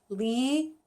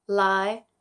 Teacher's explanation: Li, third tone, Lai, rising tone